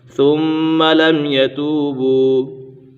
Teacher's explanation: میم ساکن میں اظہار شفوی ہوگا، یعنی غنہ نہیں کریں گے